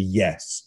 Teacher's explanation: loud and downward intonation we tend to call command tonality